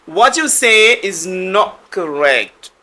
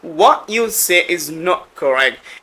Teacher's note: যেমন এখানে what you বলতে পারেন, টি কে বাদ দিয়ে বলতে পারেন, এবং টি কে আপনি টি এবং ওয়াই মিলে চ উচ্চারণ করতে পারেন।